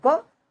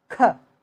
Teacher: तो अल्पप्राण महाप्राण में बस इतना अंतर। जैसे क अल्पप्राण है, ख ज्यादा एनर्जी वो करता है तो ये महाप्राण